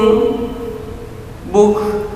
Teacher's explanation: huruf kaf yang disukun maka menjadi hamus, mendesis sedikit